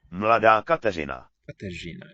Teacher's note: It's not quite an R, not quite a Ž, some sort of in-between thing.